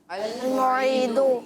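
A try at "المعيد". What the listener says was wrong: अल-मुईदु। अल-मुईनु नहीं, मुईदु दाल है, ठीक है। मुईदु, अल-मुईदु।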